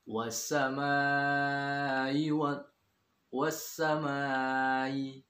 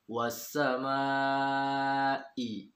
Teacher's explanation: pastikan Hamzah itu benar-benar keluar dari tenggorokan paling dalam